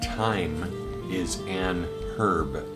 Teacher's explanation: It's like saying, the proper way to say this is, time is an herb, not time is a herb. Well, you say time is an herb, but that H is silent, so it makes sense that you would put N, because it's like you're saying Is it?